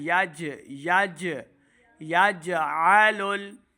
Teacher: अब यहाँ पे जीम के ऊपर कलकला ज़ाहिर करना है, यज आ नहीं करेंगे, हमने पढ़ना है यज यज यजअलुल, जीम के ऊपर कलकला ज़ाहिर करें, यजअलुल।